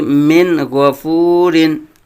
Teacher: نون میں غنہ نہیں کریں گے، نون کو واضح کریں گے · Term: اظہار